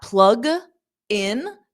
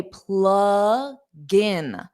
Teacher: So what I do is I transfer that g to the in, and I say plug-in.